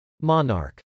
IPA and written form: mˈɑn.ɑrk (monarch)